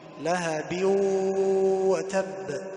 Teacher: يظهر الباء، يقول لهب وتب، هذا خطأ. الصواب هو أن يدغم لهب وتب مع إعطاء غنة، لأن الإدغام هنا إدغام بغنة. وتب مشدد، وقلقلة، يعني اجتمع 2، التشديد مع القلقلة.